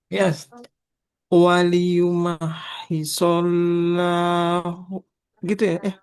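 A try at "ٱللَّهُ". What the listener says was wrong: Tebalkan lamnya.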